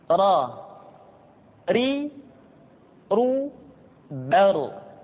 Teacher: diucapkan dengan menyentuhkan punggung lidah dengan langit-langit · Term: huruf ro